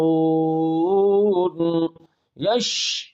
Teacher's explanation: جیم شین مخرج نمبر 7 وسط زبان